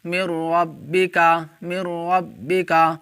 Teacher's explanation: یہاں پر دیکھیں نون ساکن کے بعد حروف یرملون میں سے را آ رہا ہے، اس لیے نون ساکن کو را سے ملا کر بغیر گنہ کے پڑھیں گے۔ اس کو ادغام بلا گنہ اور ادغام تام بھی کہا جاتا ہے۔